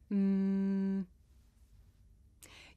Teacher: I can even feel my nose vibrating.